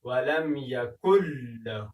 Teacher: نون دلته نه ادا کېږي، دلته ادغام کېږي، یعنې نون له لام سره یو ځای کېږي، مدغم کېږي، د دوو تورو څخه یو توری جوړېږي.